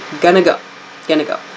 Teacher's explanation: going to go reduces to gonna go